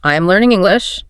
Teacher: First is falling intonation. Your voice goes down at the end.